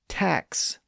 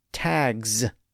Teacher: we say tax with an s sound at the end and tags with a z sound at the end. That's because the k sound in tac is voiceless.